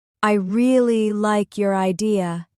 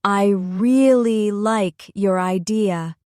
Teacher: Say it once slowly, emphasizing really and idea. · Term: stress